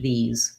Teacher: These, this SE says the Z sound. This E is the tense E, and again, voiced TH